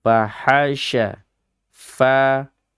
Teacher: Fa-nya rakhawa, ha-nya pun juga demikian, sya-nya juga rakhawa. Jadi ketiga huruf ini semuanya dibaca dalam keadaan yang lemah, ya. Dalam keadaan yang tidak kuat.